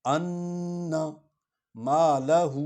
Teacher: ہو کو لمبا کریں اس پر مد ہے